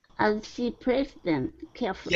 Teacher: connect the TH sound with the T sound at the end of placed.